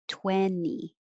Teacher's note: most american english speakers will not say the second t